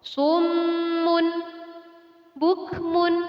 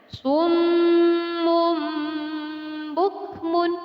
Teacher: Iqlab berarti bahwa ketika ada Nun Sakinah atau Tanwin, maka huruf tersebut diubah menjadi huruf Mim. Jadi, Nun Sakinah atau Tanwin tidak lagi berlaku. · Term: iklab